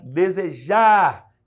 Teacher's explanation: sílaba tônica é a última, a palavra é oxítona.